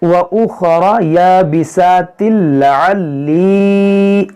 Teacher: تنوین کے بعد لام ہے تو یہاں پر ادغام کریں گے